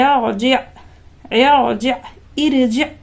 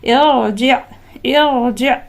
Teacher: زیر آپ کو دکھ رہا ہے یہ عارضی زیر ہے، تو را ساکن سے پہلے عارضی زیر ہو تو را کو پر پڑھیں گے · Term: تفخیم